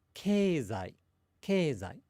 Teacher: And that beginning ke is higher than the other bits.